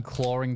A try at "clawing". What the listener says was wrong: Clawing. No, you just said it Australian. Clawing. Clawing, yeah. Because there's no R in it.